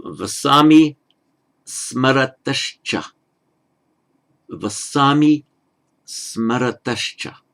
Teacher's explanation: Now, applying the sandhi, it becomes the final visarga becomes a sh before the cha.